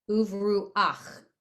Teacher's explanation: At the end, it's an ach, not a cha.